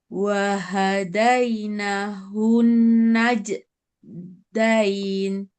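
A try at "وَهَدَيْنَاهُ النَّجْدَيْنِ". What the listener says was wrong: Nah, yang ini kurang panjang. Wahadaina, yang ini. Wahadainahu. Naj.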